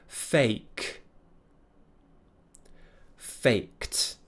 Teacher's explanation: it's an unvoiced consonant so it will be a t sound